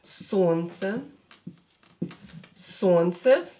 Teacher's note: This L is not pronounced.